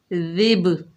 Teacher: با حروف قلقلہ میں سے ہے تو اس میں قلقلہ پیدا ہوگا، دال کو نرمی سے ادا کریں گے، جیسے ذب۔ دیکھیے با کی ڈبل ساؤنڈ آئی، یہاں پر قلقلہ ہو رہا ہے۔ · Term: قلقلہ صغریٰ